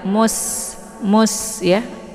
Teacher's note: D-nya dibaca pendek, kemudian musta di sini ada sin ya, sin sukun. Sin ini adalah sifatnya shafir, jadi anginnya itu jelas ya. Mus ya. Sin ini dibaca tipis.